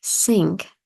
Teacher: the th sound in words like think is often pronounced more like an S